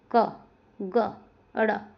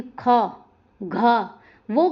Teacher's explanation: श्वास कम मात्रा में बाहर निकलती है उन्हें अल्पप्राण कहते हैं। सभी वर्णों का पहला, तीसरा और पांचवा।